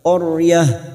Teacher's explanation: Ra sukun yang sebelumnya ada harokat fathah, ra sukun kita baca tafkim atau tebal. Qaryah. Karena kita wakaf di sini tak marbutoh kita baca qaryah, kita baca ha, qaryah.